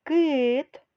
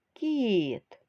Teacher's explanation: у слові кит звук к вимовляється твердо А у слові кіт звук к вимовляється м'яко Отже діти приголосні можуть бути твердими і м'якими тверді звучать твердо